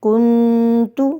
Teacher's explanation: نون کی آواز کو ہم ناک میں چھپا کر ایک الف کے برابر کھینچ کے پڑھتے ہیں، اس کو ہی ہم غنہ کہتے ہیں۔